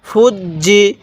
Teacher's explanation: জিম জের জি ফুজ্জি জিমটা দুইবার উচ্চারণ হবে কারণ জিমের উপরে তাস দিতাছে